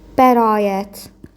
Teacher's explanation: Bax y deyirik kimi gəlir amma y demirik. Bəraət sadəcə uzadırıq.